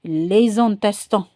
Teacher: So you have to do the liaison avec S and I.